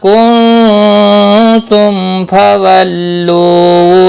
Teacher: ما الف مدہ ہے، ایک الف کے برابر کھینچ کر پڑھیں گے، نون ساکن کے بعد حروف اخفا کا تا، اخفا حقیقی ہوگا، میم ساکن کے بعد فا اظہار شفوی ہوگا۔